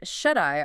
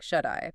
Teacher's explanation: Yes, and shut-eye often sounds like shut-eye because that T between vowels softens to a quick D sound